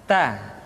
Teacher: Keluar dengan menyentuhkan ujung lidah kita dengan gusi-gusi gigi seri bagian atas. Ta. Kemudian huruf Ta ketika diucapkan terdengar ada nafas yang mengalir, atau dalam ilmu tajwid disebut dengan sifat al-hamas.